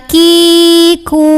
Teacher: huruf Kaf keluar dari pangkal lidah pangkal lidah kita datar nyantai ada anginnya